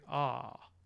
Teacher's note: the highest point of the tongue is going down and it's also going back